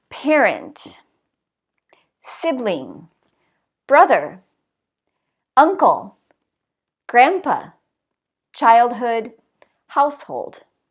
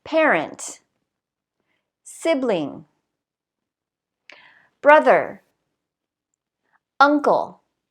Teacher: you should notice that the stress is on the first syllable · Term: word stress